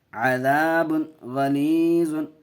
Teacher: اظہار حلقی کا کیوں ہوا؟ اس لیے کہ دو پیش تنوین کے بعد حروف حلقی کے 6 حرفوں میں سے غین آیا ہوا ہے، اس لیے بغیر گناہ کے جلد پڑھیں گے۔ یہاں الف سے پہلے زبر ہے، الف مدہ، ایک الف کھینچ کے پڑھیں گے، عین کے اوپر زبر کی حرکت، جلد پڑھیں گے۔